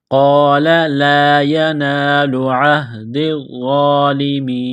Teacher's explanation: وقف کریں گے تو نون کو سائلنٹ کریں گے